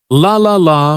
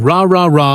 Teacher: For the L sound, the tongue touches the top of the mouth behind the teeth, but for the R sound, the tongue stays back without touching anything